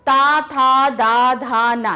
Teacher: जीभ देखिए कहाँ टकरा रही है? हमारे दांतों पे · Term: ता वर्ग